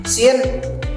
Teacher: bunyi ujung lidah dan gigi gesekan tidak bersuara tipis